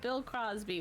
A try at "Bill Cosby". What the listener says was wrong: Cosby, no R.